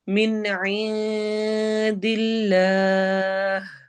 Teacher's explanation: آخر میں ہا کی آواز کے ساتھ سٹاپ ہوگا